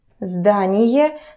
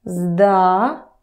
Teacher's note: the stress stays in the first position